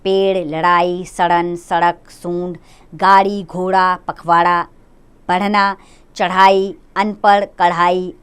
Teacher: इनके उच्चारण में जीभ को ऊपर उठाकर आगे की ओर फेंका जाता है